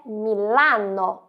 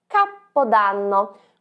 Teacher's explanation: com o som da letra A mais aberta